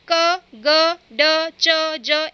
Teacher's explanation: आपको इन्हें बोलने के लिए अधिक जोर नहीं लगाना पड़ेगा और हमारे मुंह से जो वायु का दाब है, हवा का दाब है, वह भी कम होता है, इसलिए इन्हें अल्प प्राण व्यंजन कहते हैं।